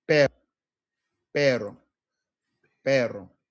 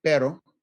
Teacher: Now, that's with a quick tap, pero. Okay. Not hearing a hard roll in there, although some people like to make a hard roll, but that could come in to bite us at the end because the double R's, okay, what we call the famous trill here, is vibrating your tongue against the roof of your mouth.